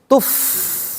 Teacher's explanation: Fa dia kalau fa itu disukunkan mengalir